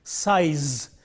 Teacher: sure that the voicing is important when we produce this word in the initial position it is voiceless and in the final position it is voiced